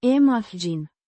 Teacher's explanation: pronounced, imagine, with the stress on the second syllable